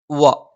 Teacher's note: വ ചുണ്ടുവൃത്താകൃതിയിൽ വെച്ചുകൊണ്ടാണ് ഉച്ചരിക്കുന്നത്